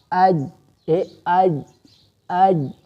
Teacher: به بالکل بند شي لکه تاسو وګورئ حمزه جیم زبر اج شدت خوشته قلقله مونږ نه کوو آواز بندیږي